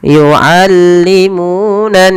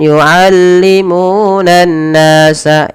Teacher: ditahan dahulu ketika melafalkan nun berharakat tasydid, jangan buru-buru. Jangan yu'allimunan nasa, itu kurang tepat. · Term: gunnah